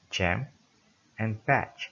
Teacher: Then ch, like in jam and patch. Air is blocked with tongue just beyond the alveolar ridge, then released as a fricative.